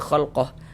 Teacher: kalau kita berhenti di huruf H kita baca khalqah, gugur tanda panjangnya. Kalau kita tidak berwakaf di sini barulah berlaku tanda panjangnya.